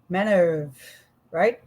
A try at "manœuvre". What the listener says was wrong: Voilà, with the re, manoeuvre. Ouais, and after the V, you pronounce the R of vre.